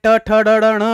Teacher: मूर्धा से बोले जाने वाले ट ठ ड ढ ण है।